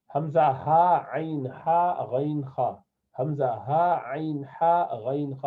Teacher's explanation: یہ حلق سے 3 سیٹ میں نکلتے ہیں. 2 نیچے سے حمزہ اور ہا ہا، یہ دونوں نیچے سے نکلتے ہیں. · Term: حروف حلق